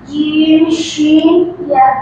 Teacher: 6 নম্বর মাখরাজ জিহ্বার গোড়া জিহ্বার মধ্যখান তারপর আবার উপরে তালুর সঙ্গে লাগাইয়া